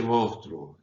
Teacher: en nuestra zona del Río de la Plata, nadie dice mosca o monstruo, se dice monstruo y la S apenas se pronuncia.